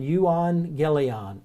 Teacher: I don't know why the Greeks decided when two gammas were together to pronounce it as an NG sound